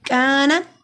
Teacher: काफ मरकज वाला बारीक पढ़ा जाता है